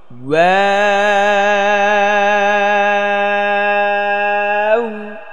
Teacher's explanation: হ্যাঁ, ওয়া ওয়া ওয়া ওয়া ওয়াও। واو প্রথম ঠোঁটটা গোল করতে হবে, তারপর আবার চ্যাপ্টা, তারপর গোল। হ্যাঁ, প্রথম গোল পরে চ্যাপ্টা স্বাভাবিক, তারপর আবার গোল।